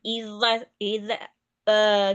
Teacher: Ujung lidahnya dia lebih runcing, perhitungannya itu kira-kira 2 gigi seri ya. Lalu dia tidak ada tekanan, hanya menggores gitu aja